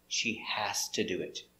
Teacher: because to is not stressed. We pronounce it ta.